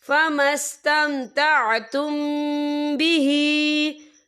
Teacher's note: मीम साकिन के बाद जो है बा आ रहा है, तो यहाँ पर इक्फा शफ़ी होगा, तो हम यहाँ गुन्ना भी करेंगे।